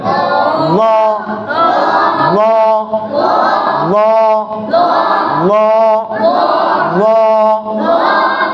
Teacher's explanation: ল উচ্চারণ হবে জিহ্বার গোড়ার উভয় সাইড থেকে, জিহ্বার গোড়ার উভয় সাইড এবং উপরের মারি দাঁতের গোড়ার সঙ্গে লাগে। দেখেন আমি জিহ্বাটা দেখাই, দেখছেন সামনে ফাঁকা ফাঁকা থাকবে, এই সাইডগুলো লাগছে দেখেন।